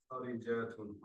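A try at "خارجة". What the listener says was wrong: don't stress the jim. You're slightly stretching the jim and it becomes a different word. It's sounding like kharijatun, which becomes a different word.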